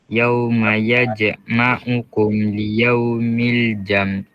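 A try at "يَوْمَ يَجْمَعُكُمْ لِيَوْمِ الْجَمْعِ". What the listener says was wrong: Jam jam ada nak bunyi ain jam jam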